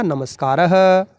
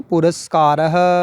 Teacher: यानी कि विसर्ग से पहले ए हो एक, तो जैसे ये है नमः धन कार है, विसर्ग से पहले ए आ रहा है उसके बाद में क, तो यहाँ पर स मूर्धन्य में परिवर्तित नहीं होगा, जो विसर्ग है वो यहाँ पर होगा दंतव्य स में, रूप बनेगा नमस्कारः।